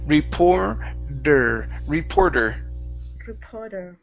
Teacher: So we're going to use a flap T here.